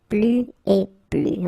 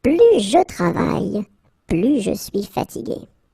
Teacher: you can see that I don't pronounce the final S